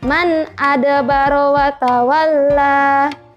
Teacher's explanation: man nun sukun bertemu huruf alif, maka dia dibaca jelas nunnya.